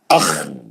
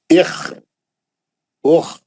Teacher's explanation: خا کا آواز کھردرا ہوتا, رف آواز, بالکل رگمال مارے تو کیسا کھر کھر آواز آتا ہے, جیسا کھکارے تو کیسا آواز آتا, ویسا اخ, ہے نا, اخ, اوخ.